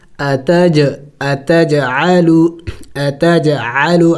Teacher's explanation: تو ہم نے اس جیم کو ہلا کے پڑھیں گے. اتج اتجعلو اتجعلو عین حروف حلقی میں سے ہے.